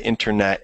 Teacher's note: I kind of dropped the T, don't I? So yeah, internet instead of internet.